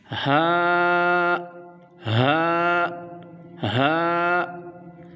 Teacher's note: हा इस हर्फ को हम हरूफ हलक भी कहते हैं और इस हर्फ का जो मखर है वह हल के नीचे वाले हिस्से से अदा होता है · اس حرف کا جو مخرج ہے وہ حلق کے نیچے والے حصے سے ادا ہوتا ہے۔ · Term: حروف حلقہ